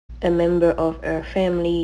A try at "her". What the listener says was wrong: member of her. You want to make sure you're pronouncing the H there. Now there are instances, for example, the word our, we don't pronounce the H, but in many cases we do. So it's her, not